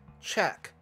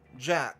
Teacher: 龈后有丝涩擦音，就是我们▁KK▁音标里面学过的▁check▁的▁ch▁跟▁jack▁的▁j